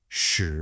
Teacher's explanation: It's pronounced sh with a nice rising tone.